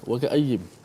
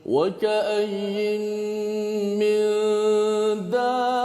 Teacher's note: Okey, kemudian bertemu dengan mim, maka huruf nun tersebut dimasukkan ke dalam huruf mim, maka berlakulah idgham. Kita baca wa ka'ayyim, nun itu dimasukkan dalam mim berserta dengan idgham.